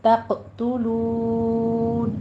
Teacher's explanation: توق نہیں کہنا یا توق، تو ایسے نہیں کرنا ہے. تق، تا باریک ہوگا کہ قوف کو پر کریں گے، آگے تا پھر باریک ہو جائے گا